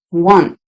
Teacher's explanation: if you have an n and an S together then you get the t almost by accident